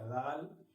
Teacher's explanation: ذال میں زبان کی نوک کو دانتوں کے کنارے پر لگانا ہے جس سے نکلے گا ذال.